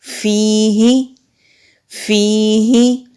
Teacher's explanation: ہا کو نہیں کھینچیں گے، صرف یا کو کھینچیں گے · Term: یا مدہ